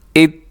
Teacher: یہاں پہ تا ہے اور اس کو اپنے قلقلہ نہیں ہونے دینا